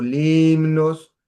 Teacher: Yo digo limnos, estoy agregando un rasgo distintivo pero es una e cerrada que claro, es más parecida a una i que una e abierta